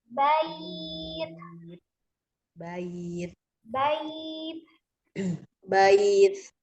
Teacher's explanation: bait E hanya aliran nafas yang keluar bukan suara ya E ditandai dengan ketika kita meletakkan punggung telapak tangan kita di depan mulut gitu itu ada hembusan napas yang mengalir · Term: alhams